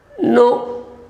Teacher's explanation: This no has a falling intonation.